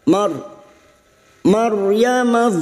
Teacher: ro sukun yang mati didahului fathah namanya ro tafkim ro yang dibaca tebal